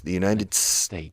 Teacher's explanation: If you make a pause, you instantly go to the Spanish style of estate.